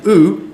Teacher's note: the oo, the goose vowel, is a high back vowel. It's still high, but your tongue is back in your mouth.